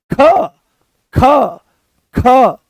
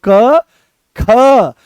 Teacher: Notice करो, दोनों को एक साथ बोलो क ख, तो जैसे ही ख बोलते हो तो पूरे कमर तक इसकी दम निकलता है, और यहां से इस वाले हिस्से से ये उठ करके चलता है। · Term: महाप्राण